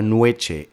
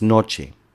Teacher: por influencia de la yod, la vocal no llegó a diptongarse